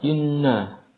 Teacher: di sana ada Nun ghunah Karena sebab adanya tasdid ghunah Inna ditekan dua harakat gunahnya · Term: nun gunnah